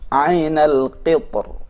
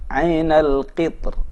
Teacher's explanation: ainal qitr dibaca mufakham, bisa juga dibaca muraqqaq